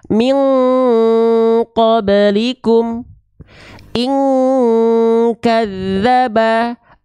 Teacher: ikhfa itu dibaca harus mendekati Eng teman-teman sekalian kalau ketemu sama Q dan Kaf